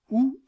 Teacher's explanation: c'est-à-dire qu'elle est à l'arrière aussi on parle de voyelle postérieure la voyelle ou est une voyelle postérieure parce que la langue est en position reculée